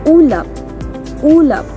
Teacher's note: ang ayos ng dila sa letrang U ay mataas at ang bahagi ng dila ay likod. Kaya binibigkas ito ng ulap, ulap.